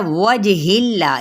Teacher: जीम पे कलकला होगा और इसमें जलाला बारीक हो जाएगा क्योंकि पीछे ज़ेर है